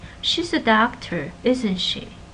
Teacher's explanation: If you have a falling intonation, what it means is that I think she's a doctor, I'm pretty certain she's a doctor, and I want you to agree with me.